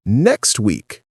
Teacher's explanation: in next week, you might not hear the T at all